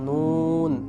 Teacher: নুন হরফের নাম যখন আমরা উচ্চারণ করব নুন, তখন নুনের উপর কিন্তু পেশ আছে, আর এই পেশ থাকার কারণেই মূলত নুনের মধ্যে ঠোঁট গোল হচ্ছে।